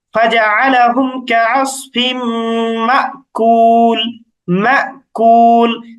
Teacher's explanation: সুতরাং হামজার উপর যখন সুকুন হয়, তখন উচ্চারণটা একটু থেমে যাওয়ার মতো হয়